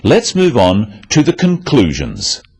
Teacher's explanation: stressing conclusions because it's the key word in this sentence the other words stressed are the key words for understanding let's